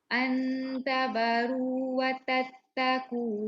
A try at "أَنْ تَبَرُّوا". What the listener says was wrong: Ada sabdu dekat ra tu ain. Antabarru. Bukan watattaqu. Watattaqu. Watatat tu terlebih satu. tabarru. Jangan tabaru.